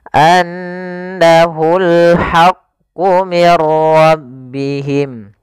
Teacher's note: Dan gunnahkanlah atau dan bacalah mim yang bertasydid atau nun bertasydid dengan bacaan gunnah. Maka cara membacanya tahan dulu n-nya, anna, baru dilepas.